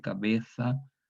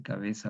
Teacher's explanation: Y luego esta Z, esta africada sorda, se confunde con la africada sonora, la Z sonora de S, evolucionando a la Z actual en el siglo XVII, la interdental sorda, la fricativa interdental sorda, interdental pronunciado como los españoles